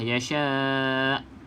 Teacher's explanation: Walaupun hamzah ni kita matikan, kena bunyikan huruf hamzah tersebut. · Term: hamzah yang sukun